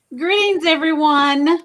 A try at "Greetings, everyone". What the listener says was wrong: Did you say greens? Greens or greetings? Well, you need to say it regular. You need to say it regular because it sounds like you said greens.